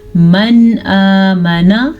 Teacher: من آمن یہاں پہ اظہار کا قاعدہ ہو رہا ہے، نون کو ظاہر کر کے پڑھیں گے.